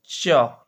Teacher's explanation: च जो होता है ना आपका तालु से बोला जाता है